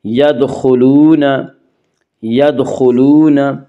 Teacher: یدخلون، یدخلون، واو مدہ، واو مدہ وہ واو جو ساکن ہو اور اس سے پہلے پیش ہو، واو مدہ کو ایک الف کے برابر کھینچ کر پڑھیں گے